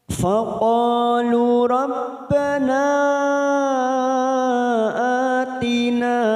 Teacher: kata-kata rabbana ada mat yang bertemu dengan hamzah di lain kalimat mat jaiz munfasil 4 harakat kita panjangkan